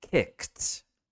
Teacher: make sure that you're not doing a sound in between that K and that t sound